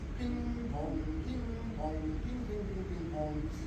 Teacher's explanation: Ping pong is another good one for resonance because you're going to the NG.